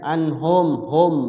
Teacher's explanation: Mim mati ketemu Fa izhar juga izhar syafawi mimnya terbaca jelas di bibir Ya maksudnya mimnya dibaca jelas mim tu huruf bibir izhar syafawi